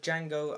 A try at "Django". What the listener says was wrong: Django. Don't pronounce the D.